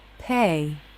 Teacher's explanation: of tongue as the front and middle push up and forward as the top front part of the tongue arches up towards the roof of the mouth the jaw comes up lips are relaxed · the jaw drops and you can see a lot of tongue as the front and middle push up and forward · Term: diff thong a